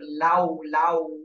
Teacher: তাহলে লাম জবর লা হচ্ছে, আর ওয়াও এর সময় ঠোঁটটা গোল হয়ে যাবে। ওয়াও তো উচ্চারণ করার সময় দুই ঠোঁট গোল করে উচ্চারণ করতে হয়। আচ্ছা, তাহলে লাম ওয়াও জবর লাউ, লাউ, এভাবে হবে।